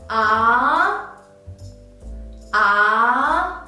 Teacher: The second tone is high rising tone.